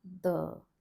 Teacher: Tip of the tongue on the teeth. No aspiration here. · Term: dental D